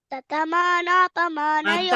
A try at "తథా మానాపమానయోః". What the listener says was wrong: తథా అనేది దీర్ఘం ఉంది